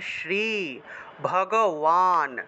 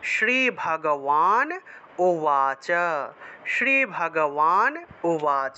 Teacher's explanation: বান শব্দটাকে ওয়ান হিসেবে উচ্চারণ করা হয় সংস্কৃতে